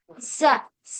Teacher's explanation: इसमें सीटी वाली आवाज आती है और हमारी जो जबान की नोक है वो नीचे वाले दांतों पे टच होती है और सीटी वाली आवाज आती है, लेकिन मोटा हर्फ नहीं है ये।